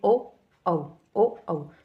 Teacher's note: तो हमारे जो होठ है उसमें भी मूवमेंट हो रहा है और गले में से भी निकल रहा है साउंड इसका। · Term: कंठोष्ठ